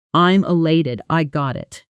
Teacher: that almost completely disappears and the words connect smoothly into each other like one long sound. This is called connected speech and it happens constantly in real English.